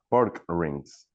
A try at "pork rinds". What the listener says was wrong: Pork rinds with D, RIDS, rinds, pork rinds.